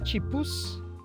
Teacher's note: palatalizado e com s no final